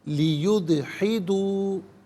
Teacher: لیدحدوا، یہاں دال ساکن ہے لیکن قلقلہ ادا کیا جائے گا، تو ناظرین دال ساکن کو اس طرح ادا کیا جائے کہ آواز لوٹتی بھی محسوس ہو